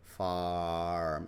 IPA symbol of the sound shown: a: